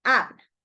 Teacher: This U is like a very relaxed sound. It's a short sound.